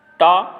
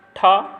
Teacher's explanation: टा अघोष अल्पप्राण है, ठा अघोष महाप्राण है,